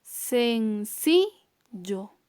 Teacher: Ahí también hay mayor intensidad de voz en la penúltima sílaba. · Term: palabra grave